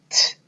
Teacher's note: The sound we make when we see T is T, and that is an unvoiced consonant sound. We do not use our voice when we say T.